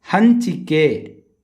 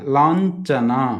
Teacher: ಆದ್ದರಿಂದ ಸೊನ್ನೆಯನ್ನು ಚ ವರ್ಗದ ಅನುನಾಸಿಕ ಅಕ್ಷರ ಇನ್ಯ ಎಂದು ಉಚ್ಚರಿಸಬೇಕು